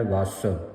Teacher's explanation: ਹੈ ਵਸ ਤੇ ਵਿਸਰਾਮ ਲਾਉਣਾ ਜਿਹੜਾ ਵਸ ਸ਼ਬਦ ਹੈ ਸੰਗਤ ਜੀ ਇਹ ਕਸ ਕੇ ਬੋਲਣਾ ਅਧਕ ਲਾ ਕੇ ਉਚਾਰਨ ਕਰਨਾ